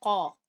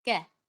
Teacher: कौफ मोटा है, कौफ की आवाज होती है कौ। और फिर इसका काउंटर पार्ट देख लें, कैफ, कै, ये बारीक है